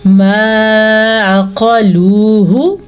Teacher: اگر ہم عین کو واضح نہیں کریں گے تو یہ حمزہ بن جائے گا اور ایک یہ بڑی غلطی بن جائے گی۔